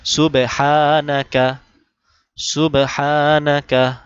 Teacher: সুবহ এখানে বা কলকলা করতে হবে। সুবাহানা হাতে এক আলিফ টান।